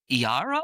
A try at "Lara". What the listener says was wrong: That's a Lara. That's a lowercase L.